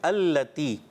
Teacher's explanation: اللتی میں جو ہے اس میں تا ہے، طا نہیں، پہلے تا ادا کریں